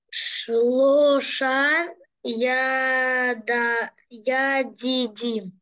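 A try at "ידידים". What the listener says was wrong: Только не я, а как еще раз попробуй первый слог?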